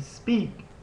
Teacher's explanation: When you say speak, there is no puff of air.